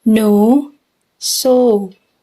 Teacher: no is pronounced as a long vowel, no, so, which can be described as long, mid-high, rounded, and back vowel.